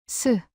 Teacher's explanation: 공기가 이빨 사이로 세어나왔죠. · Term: 시옷